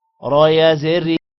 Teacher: را کے نیچے زیر ہے، موٹا نہیں کریں گے